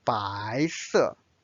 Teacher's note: 白 is the second tone, it's a rising tone. 色 is a fourth tone.